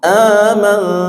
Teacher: Nun sukun bertemu ta, ikhfa hakiki. Aman, n-nya antara n dan ang pertengahan, bukan n dominan